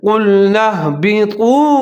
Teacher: طا اور واو ملا کے پڑھیں گے، ہونٹ گول کریں گے، جیسے قُلْنَا اهْبِطُوا، قاف کو موٹا کر کے پڑھنا ہے، طا کو ظاہر کر کے پڑھنا ہے، اور ہا کو موٹا کر کے پڑھنا ہے، جیسے قُلْنَا اهْبِطُوا۔